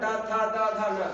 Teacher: त वर्ग त थ द ध न दांत हो गया